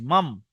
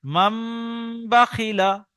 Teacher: নুন সাকিনের পরে বা এসেছে, তাই নুনকে মিমের দ্বারা পরিবর্তন করে একালি পরিমাণ গণনা করে পড়তে হবে। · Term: ইকলাব